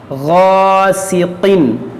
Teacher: یہاں پر دیکھیں الف سے پہلے موٹا حرف ہے, اس کو موٹا کریں گے, یہ غین بھی موٹا ہوگا اور الف بھی موٹا ہوگا